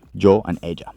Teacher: Now notice the double L, ella, that has the same phonetics, or the same sound as yo, because that Y and the double L are going to sound the same